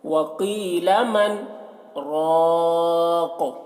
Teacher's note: اور یہاں پر آیت ہے تو یہاں پر وقف کریں گے تو قاف کے دو زیر جو ہے وہ سکون سے بدل جائے گا، تو راق پڑھیں گے. قاف میں پھر قلقلہ ہوگا اور راق کو پر پڑھیں گے